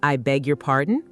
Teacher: with a rising intonation